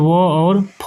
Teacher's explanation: व्याख्या देंगे कि कंठोष्ठ वर्ण कंठ और होठों के मेल से बोले जाते हैं, जैसे ओ और औ, यानी कि ओ और औ दोनों का उच्चारण स्थान जो है वह कंठ और ओष्ठ दोनों को मिला करके होता है, तो उसे जो है कंठोष्ठ वर्ण कहते हैं। और दंतोष्ठ वर्ण वे वर्ण होते हैं जिनका उच्चारण दांत और होठ के सहयोग से होता है, जैसे व और फ जो है वह दंतोष्ठ वर्ण के अंतर्गत आते हैं।